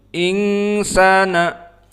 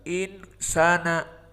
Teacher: Karena makhrajnya tertutup. Makhrajnya dari hidung khaysum. Sehingga itulah cara mengecek apakah ikhfa-nya benar atau tidak, ditutup hidung.